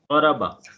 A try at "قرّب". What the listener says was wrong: شد بھی ہے اس کے اوپر. ہاں قربا. قربا